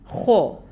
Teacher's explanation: خو حروف مستعلیہ میں سے ہے، پر ہے اور حرکت اس پہ پیش کی ہے، 1 کاؤنٹ حرکت ادا ہوگی۔